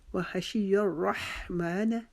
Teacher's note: و ہا کی دفعہ ہم اپنی آواز کو رگڑ کے ساتھ نکالیں گے جیسے ہم اپنا گلا صاف کرنے کے لیے آواز نکالتے ہیں۔ شین کو ہم نرم پڑھیں گے، ہماری آواز پورے منہ میں پھیلے گی